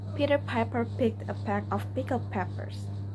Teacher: The P sound is a voice voiceless bilabive and it is made by bringing both lips together tightly to block the airflow then releasing it suddenly without using the vocal cords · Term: voiceless bilabial plosive